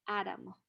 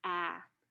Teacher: when the first vowel is stressed, it's pronounced as the ash, ah. But in the word atomic, the stress changed from the first syllable to the second syllable in the word.